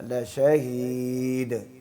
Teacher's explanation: لشہید، دال میں آخر میں قلقلہ کرنا ہے، لشہید